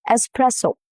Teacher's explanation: No X sound at all. The S stays intact and the stress falls on the second syllable, which is press.